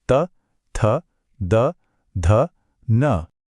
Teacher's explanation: इसका सीधा कनेक्शन हमारे दांतों से है। यह आवाजें तब निकलती हैं जब जीभ की नोक ऊपर वाले दांतों के ठीक पीछे हल्के से टच करती है। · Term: दंतव्य